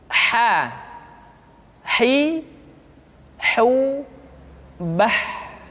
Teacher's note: huruf ha dikeluarkan dari tengah-tengah tenggorokan